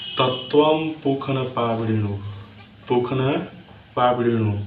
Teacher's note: देखिए दोस्तों, संस्कृत में इस मूर्धन्य स को ख पढ़ते हैं।